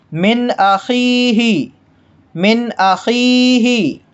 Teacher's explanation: ناک میں آواز غنہ نہیں کریں گے، گھمائیں گے نہیں، اخفا نہیں کریں گے، چھپائیں گے نہیں، ظاہر کر کے پڑھیں گے